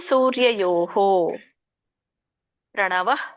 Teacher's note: ಸೊ ಪ್ರಭಾಸ್ಮಿ ಶಶಿ ಸೂರ್ಯಯೋಹೋ ಪ್ರಣವ, ಅಲ್ಪವಾಗಿ ವಿಸರ್ಗ ಹೇಳ್ಬೇಕು ಮಧ್ಯದಲ್ಲಿ ಇರೋದ್ರಿಂದ